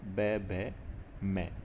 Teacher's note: तो इन जो पांचों वर्गों के अंतिम तीन वर्ण है जैसे क वर्ग का ग, ग, ड, च वर्ग का ज, ज्ञ ट वर्ग का ड, ढ, ण, त वर्ग का द, ध न और प वर्ग का ब, भ, म ये जो अंतिम तीन वर्ण है यह घोष वर्ण होते हैं। यानी इनके उच्चारण करते समय हमारी स्वर तंत्रियों में कंपन उत्पन्न होता है।